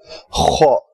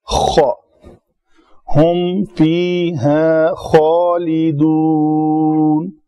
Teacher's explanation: خا کا مخرج ہے گلے کے اوپر والے حصے کو رگڑ لگے تو یہ ادا ہوگا